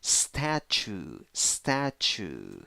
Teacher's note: two syllables the first syllable is the stressed syllable